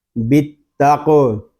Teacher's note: قاف حروف مستعلیہ میں سے ہے، اس کو پر پڑھیں گے، اور قاف حروف قلقلہ میں سے بھی ہے، اس میں قلقلہ بھی خوب ظاہر کریں گے